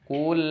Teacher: Di ayat pertama kul, dhammah di qaf ini harus terbaca atau terucap dengan sempurna ke huruf vokal u. Jadi si posisi mulut manyun ku dan posisi mulut kembali normal ketika memasuki huruf lam sukun.